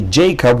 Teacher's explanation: in English you would say Jacob with the accent on the first syllable.